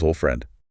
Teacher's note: old friend has the D sandwiched between an L and an F. The tongue says, nope, not doing that.